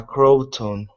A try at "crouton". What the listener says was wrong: this word is pronounced crew crouton instead of croton